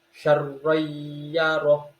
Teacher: Langsung masuk ro, karena ro-nya bertasydid kita tekan sedikit